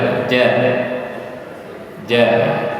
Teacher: tengah lidah terasa nempel dengan langit-langit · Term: huruf jim